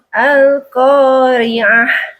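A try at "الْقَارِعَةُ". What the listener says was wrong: Ibu masih pakai ha barusan. Coba ha, Bu. Ha, hi, hu, ah, ah.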